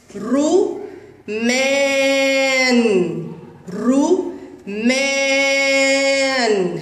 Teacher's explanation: يوجد مد بالالف في كلمه رمان والحرف الممدود هو الحرف الذي يسبق المد وهو حرف الميم وعليه فتحه